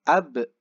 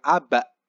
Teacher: Itu bunyinya pantulannya itu membunyikan huruf e.